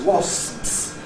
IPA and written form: wɒsps (wasps)